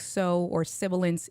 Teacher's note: But with my S's, when I use certain words like so or sibilance, you'll hear kind of that hissy, a little screechy, high